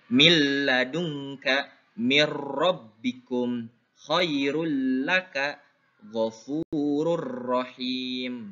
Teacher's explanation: Ini contohnya lebur tidak disertai dengung. Tetap leburnya mah ya, nun matinya atau tanwinnya kita leburkan ya. · ya dilebur tapi tidak mendengung. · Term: idgham bilagunah